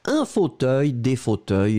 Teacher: le S final on ne le prononce pas